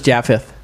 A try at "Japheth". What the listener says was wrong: I believe it would be Japheth. No, you just used the wrong vowel type.